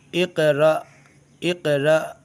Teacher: را ہونا چاہیے لیکن یہاں حمزہ جو ہے ساکن ہے لیکن حمزہ جب ساکن ہو یعنی حمزہ ساکنہ کو جھٹکا لگا کے پڑھنا پڑتا ہے